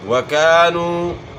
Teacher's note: واو کی ادائیگی میں ناتمام ہونٹ گول ہوں گے، واو کی ادائیگی میں آپ نے دانت استعمال نہیں کرنے